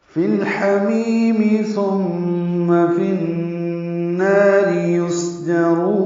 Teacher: فی الحمیم لام ساکن پہ اظہار ہے، اظہار قمری ہا کی وجہ سے، ہا وسط حلق سے ادا کریں گے. می آئے مدہ ہے، یا مدہ مدہ اصلی دو حرکات لمبا کریں گے.